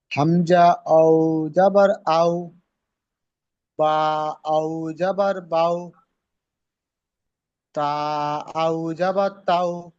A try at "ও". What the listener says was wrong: আও বলবেন না, ও।